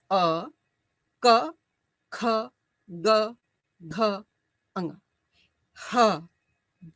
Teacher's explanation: अ कवर्ग ह और विसर्ग को कंठ से उच्चारित किया जाता है